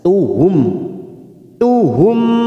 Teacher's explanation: ini hilang maka bunyinya Ashadu Ashadu ashaduhum khal mim sukun n namanya bacaan izhar syafawi kita baca jelas tanpa mendengung